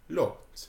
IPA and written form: lɒt (lot)